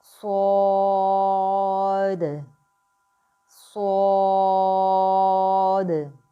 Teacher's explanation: صاد جو ہے وہ سیٹی والا حروف ہے، اور اس جو یہ ہے یہ موٹا حروف بھی ہے، یہ 3 حرفی لیٹر ہے، صاد، الف، دال، یہ 3 حرفی لیٹر ہے، اس کو بھی ہم 6 حرکات لمبا کر کے پڑھیں گے۔ یہ موٹا اور سیٹی والا حرف ہے، اس میں موٹی یعنی پر سیٹی کی آواز آنی چاہیے۔